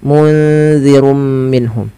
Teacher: Maka nunnya disamarkan ke za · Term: ikhfa hakiki